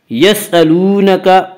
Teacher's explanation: واو مدہ وہ واو جو ساکن اس سے پہلے پیش ہو، واو مدہ کو 1 الف کے برابر کھینچ کر پڑھیں گے